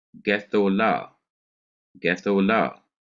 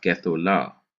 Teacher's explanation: the accent is going to be on the last syllable, which is on the la, and therefore you cannot stress the first syllable anymore.